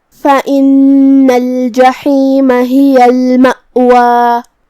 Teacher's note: کلمت المأوا میں یہاں حمزہ قطع ہے تو ہم حمزہ کو ظاہر کریں گے. آخر میں مد الف ہے تو 2 مد کے برابر ہم اپنی آواز لمبی کریں گے